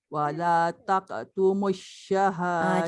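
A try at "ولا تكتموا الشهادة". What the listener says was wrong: Jaga kaf jangan tak. Wala taktumus syahadah.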